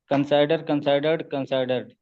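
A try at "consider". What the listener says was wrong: कंसाइडर नहीं, कंसीडर, okay.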